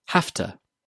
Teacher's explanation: When speaking quickly, we change it to hafta. The v sound in have changes to a f sound, and to takes the weak form ta. Put it together and you get hafta.